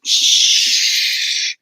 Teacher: this is a fricative sound which means it has an ongoing friction